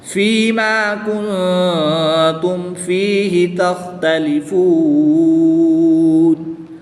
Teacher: وقف کی حالت میں واؤ مدہ کے بعد نون کی زبر کو ساکن کر دیں گے تو یہاں پر وقف کی حالت میں مد عارض ہوگی، 2 سے 3 الف تک کھینچ کر پڑھیں گے